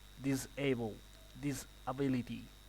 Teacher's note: a S between two vowels is going to sound like a Z.